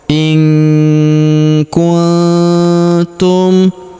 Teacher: Huruf nun sukun bertemu huruf ku. Maka nun sukunnya melebur ke huruf ku. Kita baca dengung dan samar. Dengungnya kita tahan dua sampai harakat.